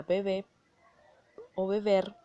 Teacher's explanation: la B que está en el segundo plano dentro de la palabra se convierte en una fricativa bilabial sonora, ya que no detiene el flujo o salida de aire. Por lo tanto, no hay obstrucción alguna.